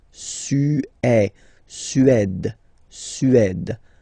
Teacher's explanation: Remember, accent grave, it's really open.